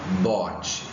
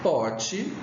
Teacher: Oral, porque o som sai pela boca e não pelo nariz. A diferença é que o bote, ele é sonoro e o pote é mudo.